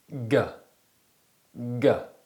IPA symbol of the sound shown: ɡ